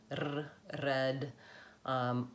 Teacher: So either it's a rolled R like r, red, or it's a tapped up R, like it sounds kind of like a D in American English, like very, very. All of those sounds I'm making by lifting the front of my tongue. I'm either moving it very quickly to roll it, or I'm lifting it up and tapping it and releasing it to make that flap D, R, like very, very. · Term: front R